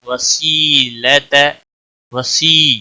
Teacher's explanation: یا مدہ ہے، ایک الف کے برابر کھینچ کر پڑھیں گے